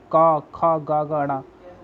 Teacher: कांठ ध्वनियाँ कंठ उच्चारण के स्थान पर बोली जाती है